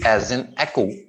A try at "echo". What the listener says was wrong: Okay, one syllable, echo, echo. It's only one syllable. Okay, दो टुकड़ों में नहीं करेंगे आप इसको, echo, ठीक है, एक ही syllable में जाएगा, बॉटम टू अप मूवमेंट रहेगी चिन की।